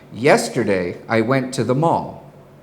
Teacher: Did you hear how my voice fell at the end of the sentence? That means the thought I was communicating had ended. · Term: falling inflection, Falling inflection